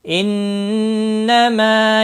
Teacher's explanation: ان نون مشدد پر گنہ ہوگا · میم ساکن کے بعد با آیا ہے، اکفائے شفوی ہوگا، گنہ کے ساتھ پڑھیں گے